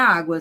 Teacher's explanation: Primeiro vai aparecer o som mais fraco, que é o da semivogal. Só então vai aparecer o mais forte, que é o da vogal. Por exemplo, ali, ó, na palavra água, semivogal e vogal. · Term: ditongo crescente